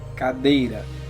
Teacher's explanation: A sílaba tônica é a penúltima, dei. E as outras cá, irá, são átonas.